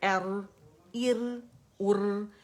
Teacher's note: یہ موٹا ہوگا کیونکہ را سکون سے پہلے فتح آتی ہے, تو اس میں جو تقریر ہے وہ زیادہ ہوگی, اور جو موٹے دمہ کے ساتھ بھی, لیکن کسرہ کے ساتھ تقریر میں تھوڑی کمی ہو جاتی ہے, ٹھیک ہے.